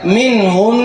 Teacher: نون کا غنہ ظاہر کریں گے اور قلقلہ نہیں کیا جائے گا، اور پڑھا جائے گا منہن۔ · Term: نون مشدد